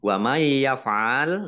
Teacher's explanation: nun sukun bertemu dengan huruf ya, bacaan idgham bi gunnah. Idgham masuk bi dengan gunnah, mendengung.